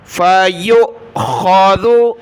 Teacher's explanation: یہ حمزہ ساکنہ ہے، اس کو جھٹکے کے ساتھ پڑھنا ہے. فَيُؤْخَذُ، خا زبر خا، ذال پیش دو، خذو.